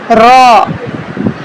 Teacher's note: जुबान जो है ऊपर वाले तालू के साथ जाके लगेगी